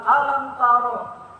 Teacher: apabila ada mim mati ketemu dengan salah satu huruf idhar, maka idhar sapawi, maka dibaca jelas di antara dua bibir.